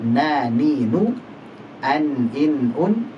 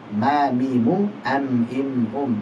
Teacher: Nun dan mim keluar dari al-khaysum, dari pangkal hidung atau rongga hidung.